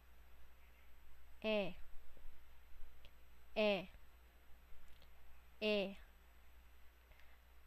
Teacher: Ang letrang E ay gitna at harap ng dila